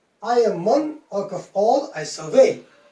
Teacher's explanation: I want you to give more stress on the third syllable of each part